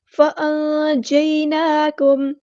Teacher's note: نون ساکن کی آواز کو ہم نے چھپا دینا، اخفا ہو رہا ہے